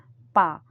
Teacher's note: फ ब भ म दोनों और टच हो रहे हैं। तो ओष्ठव्य है।